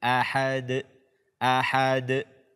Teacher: Ketika huruf yang 5 ini dalam kondisi atau berbaris sukun, maka kita membacanya dengan qalqalah atau bacaannya memantul